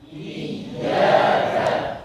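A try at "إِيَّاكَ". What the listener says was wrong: bukan dipanjangkan menjadi iyyaka karena tasyabbuh dengan mad. Jadi ditekan, hanya saja yang penting untuk diperhatikan ketika kita menekan huruf ya, jangan sampai hilang sifat rakhawah dan linnya. Misal iyyaka na'budu wa iyyaka nasta'in. Jadi syiddah, tidak lin lagi.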